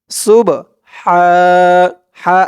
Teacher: হবে কারণ এই বা টা হচ্ছে কলকলার হরফ সুব সুব হা এই হার আওয়াজটা করার সময় গলার ভিতর থেকে চিকুন করে আওয়াজটা বের হবে